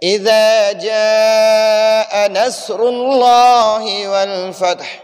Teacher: نصر میں را کو پر پڑھیں گے اور لفظ اللہ کو بھی پر پڑھیں گے، کیونکہ ہم نے یہ قاعدہ پڑھا ہے کہ لفظ اللہ، یہ اللہ کے نام، یہ جو اللہ کے نام میں یہ مشدد لام ہے جس کے اوپر یہ شد ہے اور کڑا زبر ہے.